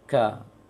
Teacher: pangkal lisan yang agak berat ke mulut, sehingga terasa angin di langit-langit. Ka, tapi tidak disengaja.